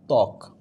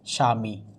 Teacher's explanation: অর্থাৎ আদিতে যদি ব যুক্ত হয় তখন বয়ের উচ্চারণ হয় না